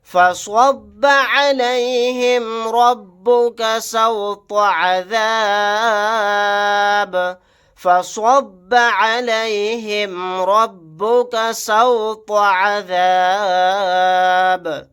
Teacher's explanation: فَصَبَّ عَلَيْهِمْ رَبُّكَ سَوْطَ عَذَابٍ، فَصَبَّ عَلَيْهِمْ رَبُّكَ سَوْطَ عَذَابٍ، سواد کو موٹا یعنی پر پڑھیں گے، را کو بھی موٹا پڑھیں گے، طوا کو بھی یہاں پر موٹا یعنی پر پڑھیں گے۔ آیت کرنے کی صورت میں با کو ساکن بنا کر پڑھیں گے، با ساکن ہوگا تو یہاں پر قلقلہ بھی ہوگا۔